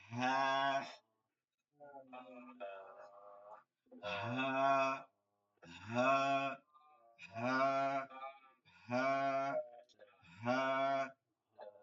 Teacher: বাতাস চলবে না, কোনো বাতাস চলবে না, গম্ভীর আওয়াজে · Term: গোলহা